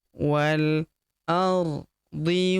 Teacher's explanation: Kemudian walqamari idza talaha wal huruf wa langsung lompat masuk ke huruf lam yang berharakat sukun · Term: hamzah wasal